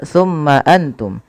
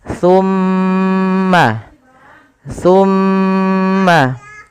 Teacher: Tapi tahan dulu suara mimnya dengan menahan bunyinya. Tumma dipanjangkan sepanjang dua harakat baru dilepas. · Ketika mim itu berharakat tasydid wajib ditahan suara ghunahnya ya. Tidak boleh langsung tumma antum.